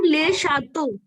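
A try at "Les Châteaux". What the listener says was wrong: Perfect.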